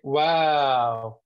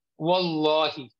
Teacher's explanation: in english you when you say wow you don't raise the back of the tongue whereas in arabic you raise the back of the tongue